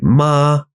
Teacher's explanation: first tone they call it five five because it starts at five and it ends at five